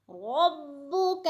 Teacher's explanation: فعل ربک، را پر پڑی جائے گی اور با مشدد ہے، سختی سے جما کر پڑھیں گے